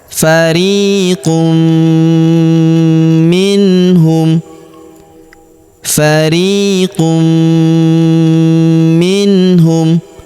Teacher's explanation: Maka tanwin unnya yang ini ya melebur masuk ke huruf mi. Kita tahan dan kita tekan serta kita dengungkan dua sampai harakat